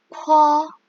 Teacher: kalau kalian letakkan tangan di atas di depan mulut kalian, akan ada angin yang keluar.